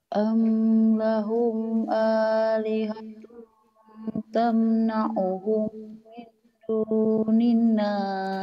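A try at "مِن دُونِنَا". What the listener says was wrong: Min dunina, jangan min dunina. Kalau min dunina ada tasdid. dunina.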